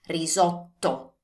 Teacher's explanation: articulate that T sound well and stress it a little bit more because it's a double T.